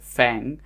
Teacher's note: ng is pronounced as the single sound at the end of a word it should be pronounced like in the english word fang but